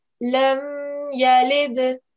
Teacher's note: On this dal, we are meant to give a jerking sound because it's one of our qalqala letters and it's got a sukoon on top here